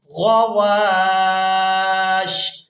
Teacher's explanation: یہاں پر آپ لوگ علامت وقف دیکھ رہے ہیں، وقف کریں گے تو وقف کی صورت میں شین کو ساکن کر دیا جائے گا، واو کو الف مدہ کی وجہ سے کھینچتے ہوئے شین ساکن کے ساتھ ملائیں گے